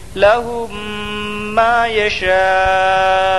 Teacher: بعد حمزہ اسی کلمہ میں ہے اس لیے مد متصل ہوگا مد متصل کو 3 الف 4 الف کے برابر کھینچ کر پڑھیں